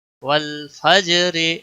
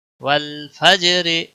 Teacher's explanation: لام کو ہلانا نہیں ہے، فا جیم کے ساتھ ملے گا، جیم پر قلقلہ ہوگا.